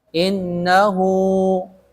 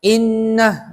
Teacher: kalau waakaf langsung disukunkan Hnya Jadi pendek · ketika di makanya dibilang dengan mad Silah silatu maksudnya disambung yakni terjadinya mad pada H damir dibaca panjang